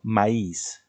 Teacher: en la palabra maíz, ¿dónde lleva la mayor fuerza de voz la vocal? En la segunda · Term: vocal tónica